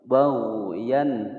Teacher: ada huruf ghain ya, dia tidak dipantulkan. Baghyan tidak boleh baghyan.